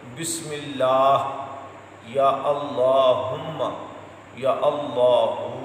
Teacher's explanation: اس میں جو ہا پڑھتے ہیں یہ حلق کے نچلے حصے سے